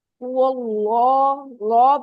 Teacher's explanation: कुल, कुल हु, हु अल्लाह, हु अल्लाह, वाह आपका हैवी हो रहा है, लाम नहीं हो रहा। हु अल्लाह, लॉ पे जबान पीछे से उठेगी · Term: लाम हैवी